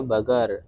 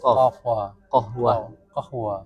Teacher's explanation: kalau di sana bilang QF pakai G